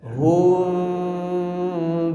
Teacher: Sempurnakan domahnya monyong dulu ya. Hum monyong dulu. Jangan langsung direnggangkan. Bukan tapi monyong dulu.